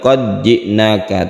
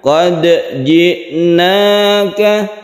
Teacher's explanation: Qad ji'naka, Kita kadang-kadang juga mendengar orang yang membaca dal ini, dal dibaca langsung ke jim atau diidghamkan, padahal ini tidak ya. Ini tidak sama sekali diidghamkan tapi tetap diqalqalahkan. Jadi harus jelas, bukan qad ji'naka tapi diqalqalahkan, qad ji'naka.